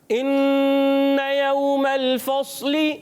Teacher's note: मीम की ज़बर को बग़ैर खींचे मीम को लाम से मिला देंगे, और लाम को हिलाना नहीं है · इन्ना यौमल फस्ली, हमज़ा को खूब वाज़े करेंगे, नून मुशद्दद में एक अलिफ का गुन्ना अदा करेंगे।